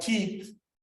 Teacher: And the tha at the end is dental.